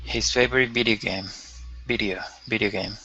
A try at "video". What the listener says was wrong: Okay, video. Okay, again with that O, you want to end with an oo sound. O, video game.